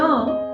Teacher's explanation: ट वर्गातल्या ड या तिसऱ्या व्यंजनाचा नाकातून उच्चार केला की ण ऐकायला येतो